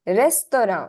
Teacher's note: the final t sound is not there